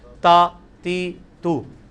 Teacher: یہ تا یہ جتنی لینتھ ہے نا یہ آدھا الف ہے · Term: حرکت